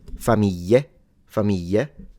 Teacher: you pronounce it in the southern way, which is a Y. Familia with a Y.